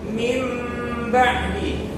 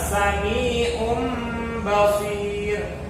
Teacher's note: Jadi nunnya ini diganti menjadi huruf mim.